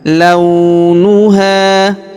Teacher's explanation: Huruf la kita ayun sekali karena wau sukun di depannya. Launuha huruf ha kita panjangkan dua harakat karena alif di depannya.